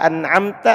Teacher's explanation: Dibaca jelas mimnya tanpa gunnah, mim sukunnya. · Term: Idhar